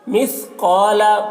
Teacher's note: قاف کو پر پڑھیں گے، حروف مستعلیہ میں سے ہے